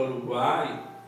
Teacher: o uruguai sai totalmente pela boca não tem nenhuma intervenção não sai nada pelo nariz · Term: tritongo